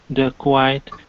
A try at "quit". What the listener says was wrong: Let's go to, instead of quite, okay, this word here is quit. So, this is, you really ought to quit. You really ought to quit. Okay, and instead of quit, it's quit, quit, short quit.